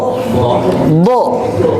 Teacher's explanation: Bod mah yang ditempelkan dengan sempurna itu adalah tepian lidahnya, jemaah sekalian. Tepian lidah, ujung-ujung lidah dari kanan dan kiri itu ditempelkan sempurna ke gigi geraham, Pak. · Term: huruf bod